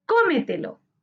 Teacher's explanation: Cómetelo es una palabra sobreesdrújula. Su sílaba tónica está en co, anterior a la antepenúltima sílaba. Se tilda porque todas las palabras sobreesdrújulas se tildan.